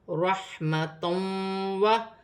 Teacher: 2 زبر کی تنوین کے بعد واو مشدد آ رہی ہے، 2 زبر کی تنوین میں غنہ بھی کیا جائے گا اور ملا کر بھی پڑھا جائے گا